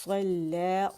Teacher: صاد موٹا ہے اور لام مشدد اور 2 دفعہ ہے